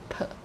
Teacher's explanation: It's a bilabial sound, right? Bilabial sound.